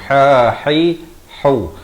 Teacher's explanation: Ha pedas berbaris dhammah di pertengahan kerongkong.